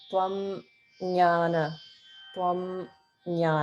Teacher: you pronounce the anaswara a little bit separately and um not emphasize it but you don't sort of run it um together with the next sound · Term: Anuswara